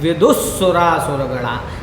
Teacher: तो यहाँ पर विसर्ग का उच्चारण ना करके आप जो है यहाँ पर क्या करेंगे, आधा सकार का उच्चारण करेंगे, क्योंकि विसर्ग से परे स आपको मिल चुका है